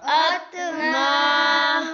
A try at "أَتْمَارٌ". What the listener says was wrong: تا پر کلکلا کیوں کہہ رہے ات؟ کلکلا نہیں کرنا. کلکلا نہیں کر دیتا.